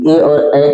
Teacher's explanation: ए और ए का उच्चारण स्थान कंठ तालु